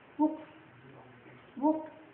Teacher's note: And then the second one is it is short, rounded, and relaxed